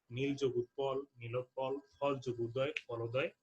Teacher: এই সবগুলো উদাহরণে কিন্তু আমরা দেখছি যে অ এবং উ মিলে ও স্বরধ্বনিতে রূপান্তরিত হয়েছে।